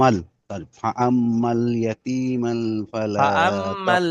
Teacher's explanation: এই মিমটা গিয়ে ডাইরেক্ট লামের সাথে যোগ হবে